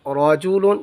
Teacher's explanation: را کو پر پڑھیں گے کیونکہ را پر زبر ہے